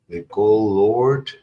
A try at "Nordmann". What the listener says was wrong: Nord with an N.